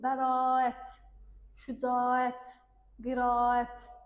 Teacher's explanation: y artımı olmur, sadəcə və sadəcə uzanma var.